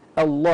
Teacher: اللام في لفظ الجلاله الاصل فيها التفخيم عند الابتداء نقولوا الله لما ن ها وحدها فقط الله هكذا